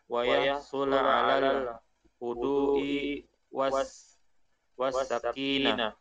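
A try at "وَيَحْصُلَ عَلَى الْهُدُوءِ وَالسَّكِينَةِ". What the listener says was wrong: Wayah sula panjang ya. Wayah sula alal hudu'i was sakinah.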